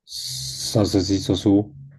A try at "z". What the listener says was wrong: Un poquito más de vibración, o sea, trata de juntar un poco más los dientes para que botes aire. Zzz. hacer que tu voz se vuelva más grave y dé el sonido de vibración, ¿vale? Y esto es tan notorio como los españoles cuando me dicen zapato en lugar de zapato, se nota, o sea, se nota clarísimo.